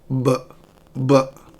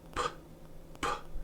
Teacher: You can say pp and then bb. Do you notice what happens when you pronounce b? The vocal cords vibrate. But when you say p, nothing happens in in the throat.